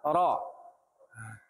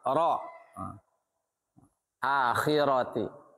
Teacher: Akhiratihum yuqinun. Ro berharokat fathah dibaca tafkhim, tebal, ro. Nah, tapi bisa menurut riwayat yang lain karena ro sebelumnya berharokat kasroh bisa dibaca tarkik.